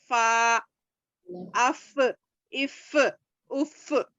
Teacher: फा को नीचे के होठ का गीला हिस्सा यानी कच्चा हिस्सा ऊपर सामने के दो दांतों को लगाने से अदा होता है।